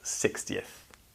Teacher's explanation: you don't pronounce the x very commonly in sixth but you do pronounce the x in 60th